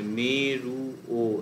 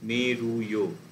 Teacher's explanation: মেরুয়, মানে মেরুও না, মেরুয়। খুব ছোট্ট করে একটা ইয়ের মতন উচ্চারণ হচ্ছে।